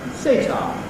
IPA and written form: s.eɪ.t.ɑː (Satar)